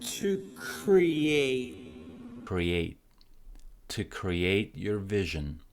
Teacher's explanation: T at the end is silent, so is not pronouncing it.